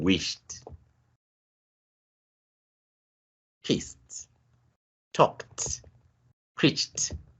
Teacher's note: We have the te allomorph across these words that end in the voiceless sounds, voiceless consonant sounds. Sh, s, k, ch.